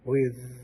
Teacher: we should end with a voiced th sound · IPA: wɪð